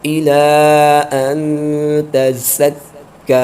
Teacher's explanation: یہاں پر مد منفصل ہو رہا ہے، حمزہ دوسرے کلمے میں ہے تو اس کو دو اڑائی الف تک کھینچ کے پڑھیں گے